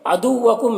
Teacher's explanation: را کے اوپر زبر ہے تو را کو پر پڑھیں گے۔ کم کے میم میں اظہار شفوی ہو رہا ہے، اسے جلد پڑھنا ہے